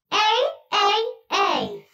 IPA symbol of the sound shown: ai